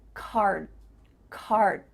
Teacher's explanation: my tongue is flat against the roof of my mouth to make the d but it's not coming out